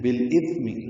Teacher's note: ایک مدہ ہے، جو لین ہے، بالاثم لام ساکن پہ اظہار، اثم میں تا نرمی سے ادا ہوگا اور اس پہ حمس ہوگا